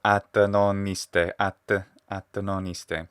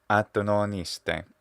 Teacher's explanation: What he's doing is he's geminating the T and he's adding a little I syllable after it.